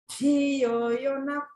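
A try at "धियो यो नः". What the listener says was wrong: dhiyo yonah. Make sure you get that naf, naf. Dhiyo yonah, naf.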